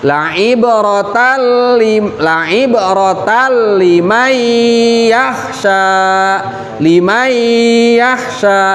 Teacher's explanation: ketika nun sukun ketemu dengan huruf iya, maka itu harus ditasdidkan dan disertai dengan gunnah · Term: idgham bigunnah